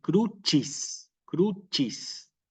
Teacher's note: La C con la I en el latín eclesiástico, a diferencia de lo que es el latín clásico, ¿sí? Se pronuncia como una chi. Cuidado que es una chi, no es una shi.